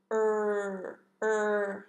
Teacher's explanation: You can see when we make the R, R sound, our lips are coming forward, R, tightly rounded, and making a R, R sound.